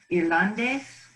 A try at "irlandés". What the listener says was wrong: One more time, because you're emphasizing the ah. You're emphasizing the ah. Try to emphasize the ending. Irlandés. You were saying Irlande. Irland.